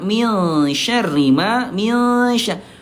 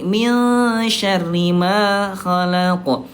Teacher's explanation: Kalau shin dia kan tengah lidah awsat.